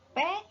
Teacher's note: konsonan bilabial itu adalah konsonan yang dihasilkan dengan mempertemukan kedua bibir atas dan juga bawah